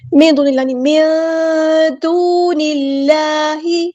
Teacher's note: واو مدہ ہو رہا ہے تو یہاں پہ مد اصلی کریں گے، 2 کاؤنٹس